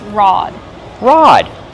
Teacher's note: Use the open ah sound like hot and stop.